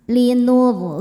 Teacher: Ra dibaca tafkhim karena sebelumnya baris dhammah, bacanya tebal.